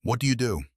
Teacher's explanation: Now at a natural speed, stress the first and the last word. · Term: sentence stress